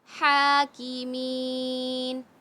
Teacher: یا مد آ گیا کھینچ کے پڑھیں گے